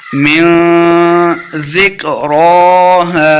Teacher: را کے اوپر کھڑی زبر ہے، اس کو 2 حرکات لمبا کر کے پڑھنا ہے